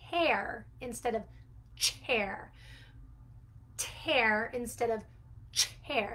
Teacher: the t sound is the early developing consonant sound that we can use to replace the ch sound